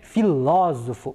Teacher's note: Neste caso, nós temos a sílaba ló como a mais forte